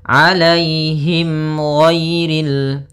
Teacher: ada mim mati bertemu dengan huruf ghain, maka dinamakan dengan idhar syafawi. Maka harus jelas suara mimnya.